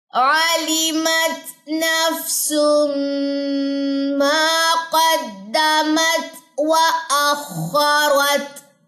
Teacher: اب یہاں پہ ایک تو ادغام مال غنہ ہے، تنوین کے بعد میم مشدد ہے، جوائننگ ادغام بھی ہوگا اور غنہ بھی ساتھ میں ہوگا